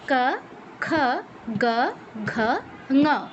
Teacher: কণ্ঠ। জিহ্বার পেছনের অংশ কণ্ঠে টাচ করবে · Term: কণ্ঠবর্ণ